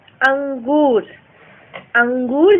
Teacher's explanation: अब आप बोल कर देखेंगे तो आपको महसूस होगा कि इसका उच्चारण नाक से हो रहा है